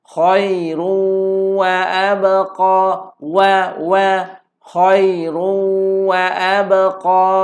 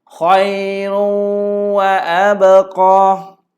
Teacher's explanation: Khairun muncul dengun sambil kita masuk kepada huruf waw.